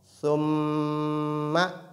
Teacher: lorsque nun et mim portent shadda, il s'agit ici du cas où la runna, qu'on appelle la nasalisation, la runna est à son maximum en termes de force et de durée